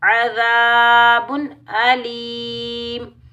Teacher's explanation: बा के ऊपर दो पेश की तनवीन का इजहार होगा।